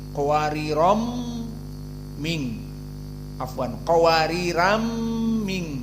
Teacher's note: Maka di sini jadi idgham karena qawariron tanwin